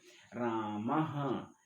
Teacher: विसर्ग भी ह के समान उच्चारण होता है, इसीलिए विसर्ग का उच्चारण स्थान क्या माना जाता है, कंठ माना। जैसे हम कहते हैं रामः, तो विसर्ग को किस के समान उच्चारण कर दे रहे हैं, ह के समान, इसलिए विसर्ग का भी उच्चारण स्थान मान लिया जाता है कंठ।